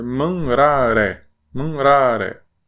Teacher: Então, dá uma enfatizada na penúltima.